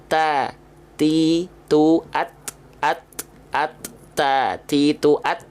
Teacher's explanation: cari atas punya bagian gusi tempat tumbuhnya tempelin pakai ujung lidah jadi ujung lidah kita enggak Keluar enggak kelihatan keluar ya enggak menjulur masih berada di dalam area mulut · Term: huruf ta